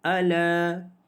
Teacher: ala dibaca dengan 2 harakat kerana mad asli huruf alif